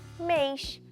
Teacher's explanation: Afinal, mês tem o som fechado e eu preciso do acento circunflexo.